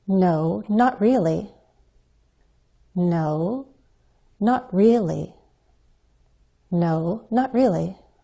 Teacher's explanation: me think you try the fall rise pattern repeat after me we'll use a fall rise to sound hesitant